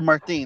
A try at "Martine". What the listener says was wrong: It sounds like you're saying martini almost.